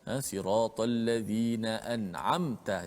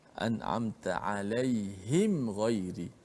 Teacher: hendaklah kita baca dengan jelas matinya izhar itu, mim mati tanpa dipanjangkan gunnah tersebut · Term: izhar syafawi